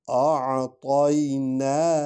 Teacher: نون کو لمبا کرنا ہے کیونکہ اس پر مد ہے